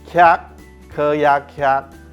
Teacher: 卡这个字嘴巴有打开来，是入声舌根韵尾